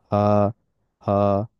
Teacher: একটা আসছে গলার বেশি নিচে থেকে, যেমন হা এবং হামজা। হা, এটা বলতে সময় একেবারে গলার গভীর থেকে আওয়াজ আসে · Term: থ্রোট লেটারস